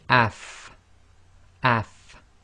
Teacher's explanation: And you should really be able to feel your teeth coming together, your upper teeth coming together with the inside of your bottom lips